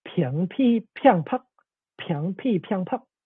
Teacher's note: Hakka is a language where b becomes aspirated p in all tones.